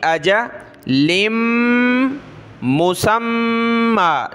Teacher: لام کو ملائیں گے میم کے ساتھ, ناک میں آواز پیدا ہوگی